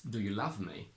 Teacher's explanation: In the sentence, do you love me? The stress is only on the word love because it's the only content word in this sentence.